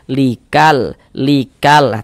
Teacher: Alif lam qamariyah itu disebut juga dengan izhar qamariyah atau izhar qamari. Karena cara membaca huruf lamnya dibaca izhar, terbaca dia dengan jelas. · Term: izhar qamariah